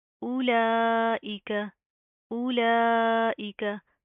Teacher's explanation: पहले हमजा की अदायगी होगी, उसके बाद डायरेक्ट इस्लाम की अदायगी होगी। लाम के ऊपर खड़ा ज़बर है, मद है, इसको हम लंबा करेंगे, खींच कर पढ़ेंगे